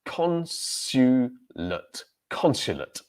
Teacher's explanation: So stress syllable, first one, consulate.